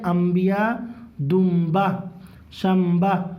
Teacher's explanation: نون ساکن کے بعد اگر با آ جائے گا تو میم سے بدل کے پڑھیں گے